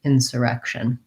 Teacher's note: So an insurrection is a noun, and the stress pattern in insurrection is second to last syllable stress. So the rect syllable is stressed. It has the red tent vowel, sounds like the word red.